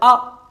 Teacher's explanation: है विवृत का और विवृत का अर्थ होता है खुला हुआ जिसमें मुख पूरा खुलता है या सबसे ज्यादा खुलता है उसे कहते हैं विवृत